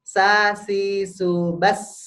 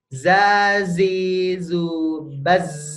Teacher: Kalau sa ditiup ya kalau Za digetarkan